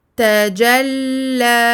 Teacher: On ne bloque pas le son à la fin de ce mot. Sinon, ce serait comme si on ajoutait une hamza. · On termine avec prolongation de deux temps.